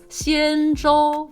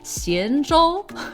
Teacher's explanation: they're both first tones. So it's Xianzhou, right? Flat tones.